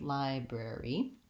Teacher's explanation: the letter Y says the sound E, the tense vowel E in this word